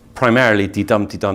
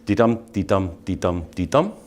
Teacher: So it is primarily de-dum, de-dum. These are iambs.